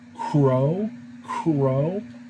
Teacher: the q sound is a little bit farther down in the throat